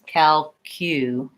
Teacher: And I think probably the tricky part in this word, beyond just which syllable should be long and short, is this Q syllable, calculation. So even though I spell it with a C and a U, I have a Y sound in there. So I would think about that as calculation, and I want to make sure I have the length on the lay.